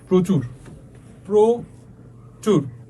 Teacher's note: রফলা যুক্ত অ এর উচ্চারণ কি হবে ওর মত হবে